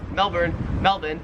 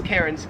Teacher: the Australian accent just leaves the R off if it's ever in the last syllable of a word.